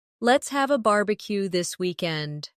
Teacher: Stress barbecue and weekend, so it sounds lively and friendly.